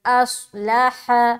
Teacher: ہا کو سینے کی طرف سے نکالیں گے